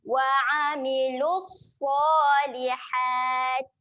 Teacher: Okay, hati-hati makhraj huruf ain. Okay, makhraj huruf ain tempatnya di tengah kerongkong. Okay, jadi kita kena tekan di tengah kerongkong.